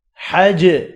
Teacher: جیم پر قلقلہ ہو رہا ہے، ساکن ہے اس لیے